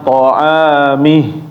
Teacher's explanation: maka dibacanya jangan tebal. Jadi bacanya ta'amih. Nah, tetapi dia tipis, tarkik.